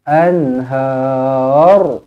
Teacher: Ra dibaca tebal kerana sebelumnya berbaris atas.